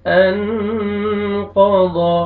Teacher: الذی انقض، نون ساکن کے بعد حروف اخفا میں سے قاف ہے، قاف کو موٹا کر کے پڑھیں گے اور نوز میں ساؤنڈ لے کے جائیں گے